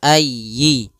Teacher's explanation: jangan dipanjangkan y, atau ayyi ala, tapi tekan y-nya